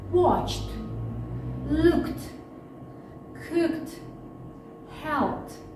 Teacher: Итак, как правильно читается ed? Если глагол оканчивается на глухой согласный звук, кроме звука т, то окончание ed мы произносим как т.